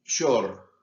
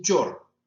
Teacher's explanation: En Venezuela no dicen short por el pantalón, sino dicen chor. ¿Por qué? Porque para ellos ese préstamo no existió. Ellos lo convirtieron a ese fonema, digamos, de carácter fricativo en africado.